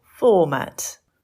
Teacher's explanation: Stress on the first syllable - format.